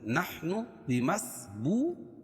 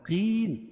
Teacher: نحن بمسبو، واو ساکن سے پہلے پیش ہو تو واو مدہ. قین، اور یا ساکن سے پہلے زیر ہو تو یا مدہ. یہ دونوں کو ایک ایک الف کے برابر کھینچ کے پڑھیں گے. اور وقف کی صورت میں نون کے اوپر جو زبر ہے اس کو جزم سے بدل دیں گے تو یہ مد عارض وقفی ہو جائے گا.